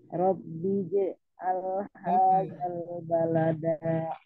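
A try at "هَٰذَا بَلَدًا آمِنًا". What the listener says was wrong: Jangan hadal, tidak ada lamnya. Hadza baladan amina. Bukan al.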